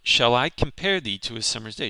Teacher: you have 5 iambs, which is an unstressed and then stressed beat, which comes out to usually around 10 syllables, not always, per line. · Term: iambic pentameter